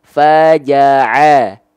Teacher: Jadi ain jangan sampai dilafalkan masuk ke dalam rongga hidung kita.